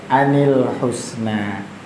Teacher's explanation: ketemu lam yang syamsiyah itu menjadikan huruf nunnya dibaca kasrah